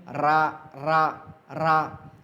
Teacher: तो रा को लुंठित क्या कहते हैं, इसका अगर हम अर्थ देखेंगे, लुंठित मतलब लुढ़कना। हम जब रा का उच्चारण करते हैं तो हमारी जो ज़ुबान की नोक है ऊपर जा कर के ऐसे लुढ़क जाती है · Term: लुंठित वर्ण